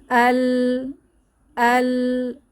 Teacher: আওয়াজটা খুলেও গেল না বন্ধ হলো না আংশিক জারি রইলো তাইলে এটা তাওয়াসুত আশা করি বোঝাতে পারলাম তাহলে সিদ্ধা আল তাওয়াসুত